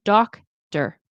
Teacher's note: doctor, doc is where the stress is